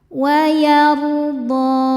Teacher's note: Ra sukun dibaca tafkhim karena sebelumnya fathah, dibacanya tebal.